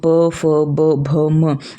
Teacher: आप सिर्फ होठों का इस्तेमाल कर रहे हो, इसीलिए इसका नाम दिया गया है ओष्ठ।